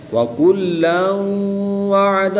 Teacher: دو زبر کی تنوین کے بعد واو حروف یرملون میں سے ہے تو یہاں پر ادغام مع الغنہ ہوگا، یعنی غنہ کر کے پڑھیں